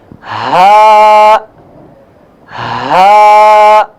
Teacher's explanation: ہا کا جو حرف ہے یہ گلے کے تیسرے حصے سے ادا ہوتا ہے جو سینے کے قریب ہے